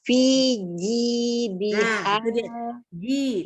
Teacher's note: Jimnya jangan berubah jadi Z ya.